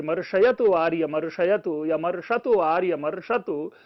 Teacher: तो देखिए यहां पर मूर्धन्य श आता है